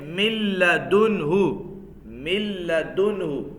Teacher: ادغام ہوگا لیکن غننے کے بغیر. ادغام بلا غنہ, ادغام بلا غنہ. · ادغام بلا غنہ, بغیر غننے کے ادغام